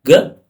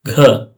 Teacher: ಈ ರೀತಿ ಕಡಿಮೆ ತಗೊಳೋ ಉಸರು ಮತ್ತೆ ಹೆಚ್ಚು ತಗೊಳೋದಕ್ಕೆ ಅಲ್ಪಪ್ರಾಣ ಮತ್ತೆ ಮಹಾಪ್ರಾಣ ಅಂತೀವಿ